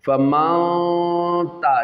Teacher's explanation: جب حروف اکفا پڑھ لیا، اب یہاں پہ اکفا ہو گیا، چھپا کر گنہ کریں گے ناک کے بانسے سے، زبان ٹچ نہیں ہوگی